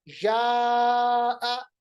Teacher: اس کو ہم کہیں گے مد متصل یا مد واجب. مد متصل حرف مد کے بعد سبب مد بشکل حمزہ اسی کلمے میں، تو اس کو ہم 3 یا 4 الف کے برابر لمبا پڑھیں گے